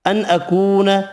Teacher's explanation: نون کا اظہار ہوگا، واو مدہ ایک الف کی مقدار میں کھینچ کر پڑھیں گے